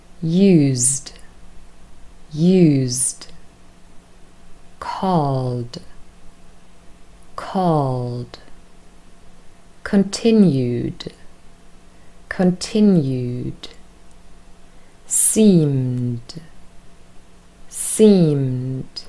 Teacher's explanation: the next group are verbs where ed is pronounced with d, the voiced consonant d. Sounds a lot softer than t